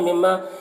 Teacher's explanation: मीम मुशद्दद गुन्ना के साथ पढ़ेंगे, अलिफ मद्दा है एक अलिफ के बराबर खींचेंगे।